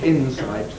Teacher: that morphological division is preserved phonetically so that we say Insight the S remains in a different syllable from the N